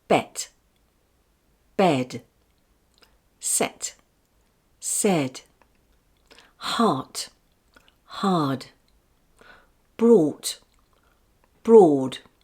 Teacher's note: When T or t is at the end of a word, it shortens the vowel sound before it, while D is very weak and makes very little noise, but lengthens the vowel sound before it.